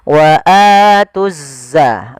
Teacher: Di sini ada bacaan alif lam syamsiyah. Wa atuzza, langsung diidghamkan ke huruf zai